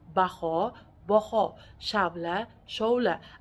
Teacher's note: Qahr, g'azab, xabar. Ba'zi so'zlarda sheva ta'sirida o tovushi kabi aytiladi.